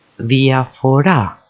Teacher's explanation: διαφορά takes the emphasis on the final syllable